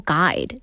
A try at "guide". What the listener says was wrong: You said a guy. an actual guy. A guide. Guide,